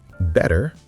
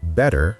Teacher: T often becomes softer or sounds like a quick D in casual speech